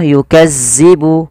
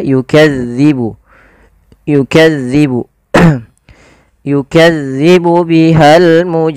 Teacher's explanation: Zal ini tidak boleh dibaca atau tidak boleh diganti dengan huruf zai. Contoh yukazzibu tidak, tapi dia yukadzibu. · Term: huruf zal